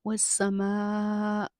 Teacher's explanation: مد متصل ہے، 3 سے 4 الف کے برابر کھینچ کے پڑھیں گے۔